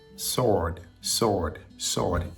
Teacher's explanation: again the W is silent we don't pronounce a w · the W is silent. We don't pronounce the W. It's just like Lord, Lord, sword, sword, Lord, Lord.